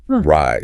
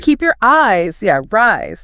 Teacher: In fast speech, your eyes links together, and it sounds almost like one word, rise. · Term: linking